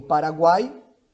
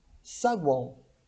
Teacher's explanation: os tritongos podem ser orais, como em Paraguai, ou nasais, como em saguão